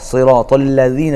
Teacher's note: ذال کو ادا کرنے کے لیے زبان کی نوک اوپر کے دانتوں کے سرے پر کنارے پر لگے گی